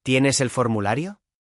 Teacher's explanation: En las totales o absolutas, las de sí, no, donde a menudo el verbo inicia o es prominente, la inflexión final es ascendente. Por ejemplo, ¿tienes el formulario? La voz sube al final.